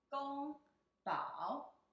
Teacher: It's the first tone and the third tone.